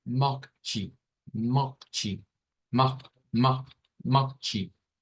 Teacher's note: Y nótese que aparece un sonido chi al final, con una CH, chi, que es común en la terminación TE. La terminación TE siempre suena a chi en portugués brasileiro.